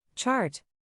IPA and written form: tʃɑːrt (Chart)